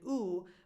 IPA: u